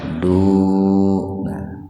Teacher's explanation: huruf lam didahului doma. Jadi lafaz Allahnya dibaca tebal. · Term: tafhim lafdzul jalalah, tafhim